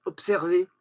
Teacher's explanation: on écrit un be qui est voisé avec un S, mais on n'entend pas be, se, on entend pse